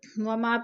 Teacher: ووالد وما ولد، وما پہ الف مدہ ہے، الف خالص سے پہلے میم کے اوپر زبر ہے، الف مدہ، الف مدہ کو ایک الف 2 حرکات کے برابر کھینچ کر پڑھنا ہے